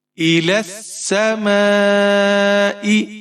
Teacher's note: لام کے اوپر زبر ہے، آگے سین مشدد ہے، لام کو سین کے ساتھ ملائیں گے